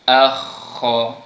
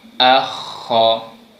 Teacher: Huruf kha juga dia punya makhraj berada di hujung kerongkong di atas sekali, yang perlu kita geserkan sedikit dia punya bunyi.